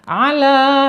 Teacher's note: Ini madnya mad asli ya, sama panjangnya 2 harokat ya, 1 alif atau 2 ketukan.